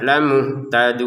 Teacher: Kemudian lamuhtadun di sini langsung 6 harokat